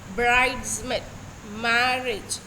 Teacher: Trochee is something that is extremely opposite to an iamb. Here, first one stressed syllable followed by one unstressed syllable.